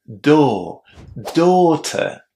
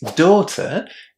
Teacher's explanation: Not pronouncing the R, especially if it's at the end of a word or there is a vowel and an R followed by another consonant is very characteristic of British English